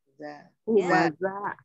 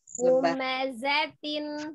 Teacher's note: Kalau dengan huruf zai memang secara makhraj itu sama dengan sin ya. Ujung lidahnya di antara ujung gigi seri atas dan bawah